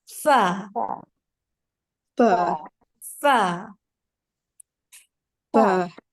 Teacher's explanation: the tips of our first 2 teeth are going to be touching with the lower lip inwards